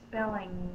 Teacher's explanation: tongue is up in the back the sound is coming through my nose